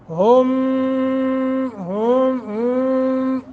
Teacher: गुन्ना के अंदर आवाज़ तो नाक में ले जानी है, लेकिन गुन्ने के अंदर एक गुनगुनाहट की आवाज़ पैदा होती है, उस आवाज़ का नाम ही गुन्ना है।